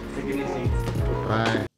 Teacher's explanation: do you hear the stress on take and easy stressed more than the rest take easy bye the ease syllable and easy is stretched out